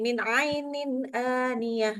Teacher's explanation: A-nya harus lebih ke belakang lagi ya.